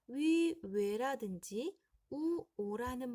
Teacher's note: 위, 외라든지 우, 오라는 모음은 발음할 때 입술이 오므려지죠? 동그래집니다. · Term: 원순 모음